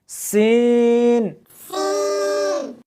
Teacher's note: اس حرف کو جب پڑھیں گے تو سیٹی کی آواز آنی چاہیے